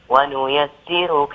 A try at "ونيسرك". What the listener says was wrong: ونيسرك تفخيم الراء